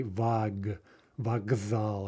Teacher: Vokzal, because of the z, which is voiced. The ka also becomes voiced, and we say vag, vokzal, as though it were a g. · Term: voicing